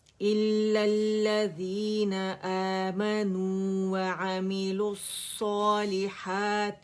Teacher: اچھا یہاں پہ واو ڈراپ ہو رہا ہے، ٹھیک ہے، اور حمزۃ الوصل ڈراپ ہو رہا ہے، یہ نہیں پڑھا جائے گا، ٹھیک ہے. ہم لام کو ڈائریکٹ صاد سے ملائیں گے، لام تعریف بھی نہیں پڑھا جا رہا